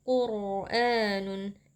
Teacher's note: atau dengan tebal karena rnya di sini sukun sebelumnya berharakat damah huruf q ya di belakangnya juga itu kita baca tebal ya dengan mengangkat pangkal lidah · terdapat mad badal karena ada Hamzah yang berhadapan dengan mad itu dibaca panjang dua harakat